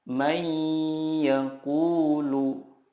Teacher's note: Cara membacanya adalah meleburkan nun sukun ke huruf berikutnya dan disertai gunnah yang dipanjangkan 2 sampai 3 harokat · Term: idgham bil gunnah